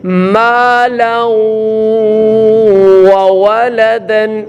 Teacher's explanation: تنوین کے بعد واو ہے تو یہاں ادغام مع الغنہ، غنے کے ساتھ ادغام ہوگا، یہاں غنہ کریں گے